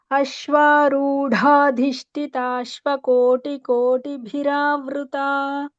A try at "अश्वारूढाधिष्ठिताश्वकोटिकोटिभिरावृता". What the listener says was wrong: Bhagini, it is Ashvarudhadhishthitaashva. The Shthi is also Mahaprana. Bhagini, all three are Mahapranas. Ashvarudhadhishthitaashva.